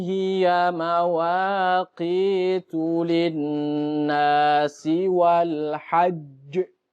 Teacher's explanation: Ada mantulnya karena bertemu dengan huruf berbarengan dengan huruf qalqalah